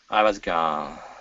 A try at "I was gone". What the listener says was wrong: Okay, pronounce that N instead of ga. Okay, ga, n. Place your tongue to the top of your mouth. Gone. With the N sound at the end of the word, okay, you're leaving your tongue down. Okay, you're saying ga.